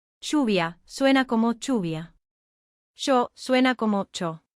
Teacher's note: esas letras se pronuncian como una especie de che o sh. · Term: yeísmo reilado